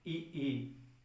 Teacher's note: तो जब ई बोलते हैं तो जीभ का आगे वाला भाग ऊपर उठ जाता है